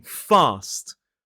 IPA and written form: fɑːst (fast)